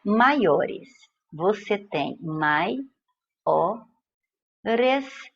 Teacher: Eu tenho um ditongo oral e é decrescente, porque a vogal veio antes da semivogal.